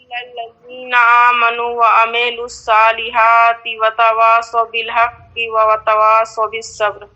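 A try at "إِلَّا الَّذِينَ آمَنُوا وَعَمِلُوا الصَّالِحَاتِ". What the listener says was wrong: عاملو نہیں، یعنی عاملو نہیں، میم کو نہ کھینچیں. الا الذین آمنوا وعملوا، آمنوا وعملوا الصالحات. میم کو آپ کھینچ رہی ہیں، میم کو آپ کھینچ رہی ہیں. عملو کے میم پر کون سی علامت ہے؟ زیر کو کھینچتے ہیں یا نہیں کھینچتے ہیں؟ نہیں کھینچتے ہیں.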